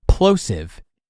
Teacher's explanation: get right up on the microphone and say the word plosive, you heard that big gust of air from the P and that word hit the microphone capsule